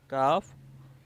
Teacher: Kaf comes out from the root of the tongue and the hard palate.